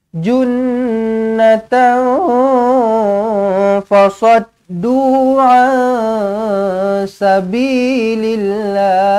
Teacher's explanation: Junnatan fasaddu, tanwin tak selari bertemu dengan fa, ikhfa hakiki dengungkan 2 harakat.